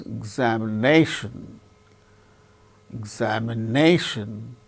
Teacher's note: a second syllable gains less importance so it is said to receive secondary accent so in the case of polysyllabic words one syllable gains more